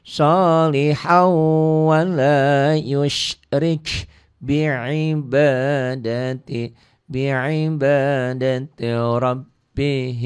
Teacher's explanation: han jadi haw karena tanwin ketemu waw idgham biguna.